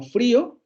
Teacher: Tenemos la labiodental, luego la vibrante simple. Son dos consonantes que están funcionando como ataque. Y luego tenemos la vocal cerrada anterior no labializada, que está funcionando como núcleo de la sílaba. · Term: dos consonantes de ataque